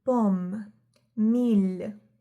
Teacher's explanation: It is almost similar as English M, but the lips touch each other softly.